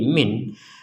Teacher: Karena berhentinya di min, maka nun sukunnya dibaca dengan jelas.